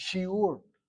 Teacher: The word is not shiur, shiur. You can't say it that way. It's shiur. We hit the second syllable.